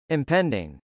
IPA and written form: .ɪmpˈɛndɪŋ (impending)